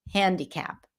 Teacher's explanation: in American English before the n the a is a little smoother closer to an e